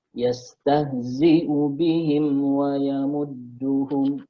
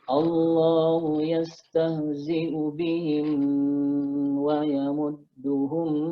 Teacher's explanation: mim mati ketemu waw, ini izhar syafawi ya, izhar syafawi, dari katanya saja izhar itu maknanya jelas, jadi nggak boleh ditahan, harus dibaca jelas ya